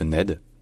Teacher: en anglais, le N et le D sont vraiment alvéolaires, donc avec la pointe de la langue qui est vraiment au-dessus des dents, qui ne touche pas les dents.